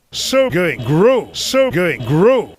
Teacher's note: the long O sound, which many Indians tend to cut short.